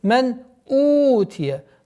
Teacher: правило изхар, четкое произношение нун сукун